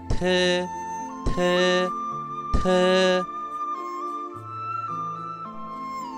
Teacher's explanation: La T se pronuncia igual que en español, pero esta vez expulsando mucho aire.